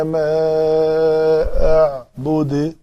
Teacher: کافرون لا اعبد ما تعبدون ولا انتم عابدون ما اعبد. یہ دال کے اوپر پیش تھی لیکن ہم نے اس کو ساکن کرنا تھا تو دال کے اوپر قلقلہ کیا